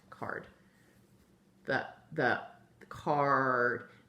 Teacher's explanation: The A is being controlled by that R and making card. You don't really even hear the A in there. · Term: R-controlled vowel